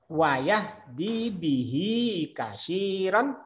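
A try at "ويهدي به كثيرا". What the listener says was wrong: bagus tapi dirinya kurang kurang sedikit lagi kurang panjang kurang manis dinya panjangin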